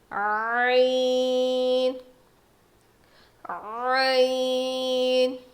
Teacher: عین، حلق کو دبا کے پڑھنا ہے